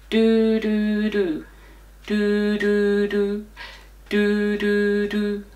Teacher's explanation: we're gonna be tonguing on the gummy Ridge behind your teeth not on your teeth and I'm gonna use the syllable D so we're gonna say